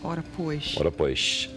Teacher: o S chiado dos cariocas é muito parecido com o S chiado dos portugueses